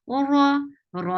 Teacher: ra is a heavy sound. For fatha, open your jaws. Whenever ra or ra is with fatha or dhamma, you're making the sound heavy.